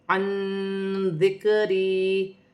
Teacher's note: حمزہ کے نیچے 2 زیر کی تنوین ہے، تنوین میں غنہ نہیں کیا جائے گا۔ نون ساکن میں اخفا ہوگا، ذال حرف اخفا میں سے ہے